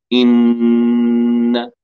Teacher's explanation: والصوت صوت الغنة يأتي من الخيشوم. يشترك في إخراج النون جزئين، جزء خيشومي تمام، وجزء من الفم من طرف اللسان، هذا الطرف هنا.